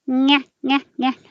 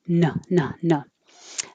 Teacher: keeping the tongue lower lets air come up the back and through the nose. · Keep your tongue high, nyeh, nyeh, nyeh, or low, no, no, no.